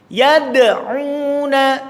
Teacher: Ketika disukun maka dia mantul karena ada qalqalah.